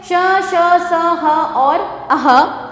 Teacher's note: इन वर्णों का उच्चारण करते समय श्वास तीव्र गति से मुख से रगड़ खाती हुई बाहर निकलती है, जिससे गर्मी यानी कि ऊष्मा उत्पन्न होती है। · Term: ऊष्म व्यंजन